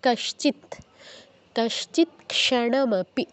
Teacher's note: খন্ডতর জায়গায় আমাদের ত হসন্ত উচ্চারণ করতে হবে মানে ত এর অর্ধ উচ্চারণ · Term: খণ্ডত